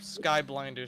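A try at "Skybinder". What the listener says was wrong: You mean binder? You keep saying blinder. It's binder.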